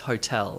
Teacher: Hotel has two syllables, but honestly, they're kind of even.